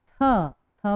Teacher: दांत से हमारी जिह्वा स्पर्श हो रही है। तो इन पांचों वर्णों को हम बोलते हैं दंतव्य व्यंजन। · इनका उच्चारण करते समय हमारी जिह्वा हमारे दांतों को स्पर्श कर रही है और ध्वनि बाहर हो रही है, इसलिए इन्हें कहते हैं दंतव्य व्यंजन।